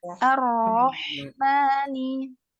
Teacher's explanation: pada kata ar-Rahmani, huruf H-nya mengalir.